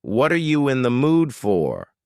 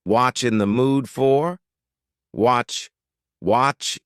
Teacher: here the word you have been reduced to Cha Cha this is extremely common in spoken English that the word you